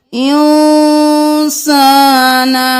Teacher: ہم اخفاء کریں گے، یعنی ناک میں آواز کو چھپائیں گے